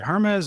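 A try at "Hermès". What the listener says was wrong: No, the H is silent.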